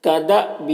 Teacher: کدأبی، یہاں پر الف کے اوپر جزم ہے تو یہ حمزہ ساکنہ ہو گیا، اور حمزہ ساکنہ کے پڑھنے میں جھٹکا لگتا ہے تو یہاں پر جھٹکا لگا کے پڑھیں گے۔